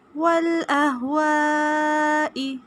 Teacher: والاہواء مد واجب ہے، 3 سے 4 الف کے برابر لمبا کریں گے